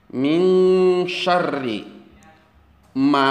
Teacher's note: holako terdapat nun mati bertemu dengan huruf SIM hukumnya adalah ikhfa bunyi ikhfa itu adalah dengung seolah-olah berbunyi Eng